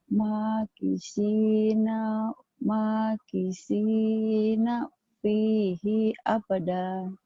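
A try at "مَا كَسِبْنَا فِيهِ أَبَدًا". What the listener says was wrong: Itu penekanan ya. Hinya pendek.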